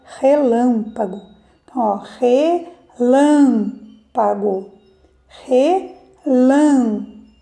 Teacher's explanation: nesta palavra a sílaba mais forte é a sílaba Lan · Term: sílaba tônica